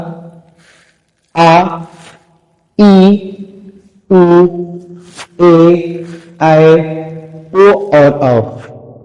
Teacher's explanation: जिन स्वरों के उच्चारण में दो गुना समय, अर्थात ह्रस्व स्वर से दो गुना समय लगता है, तो वहां दीर्घ स्वर होते हैं।